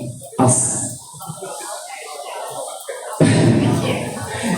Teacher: Bezanya dengan yang huruf shad ini, pangkal lidah kita itu kena angkat sedikit.